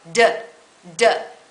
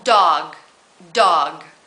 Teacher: explosive sound tom-tom does it's exactly the same mouth position and your tongue is strongly pressed against that bump behind your teeth your tooth ridge but you turn on your voice this time